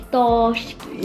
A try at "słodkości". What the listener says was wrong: Again, it's L. Słodkości. Słodkości.